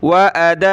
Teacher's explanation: दाल अलिफ मद है तो खींचेंगे।